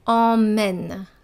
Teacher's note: on utilise la voyelle nasale en